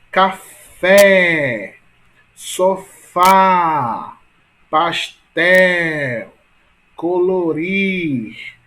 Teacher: Perceba que a sílaba mais forte são quais, né? Em café é fé, em sofá é fá, em pastel é tel